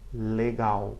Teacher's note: I'm kind of exaggerating the effect there, but just so you hear that it's nothing like the L in English, it's closer to a W sound used as a consonant.